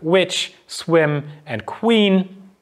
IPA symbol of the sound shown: w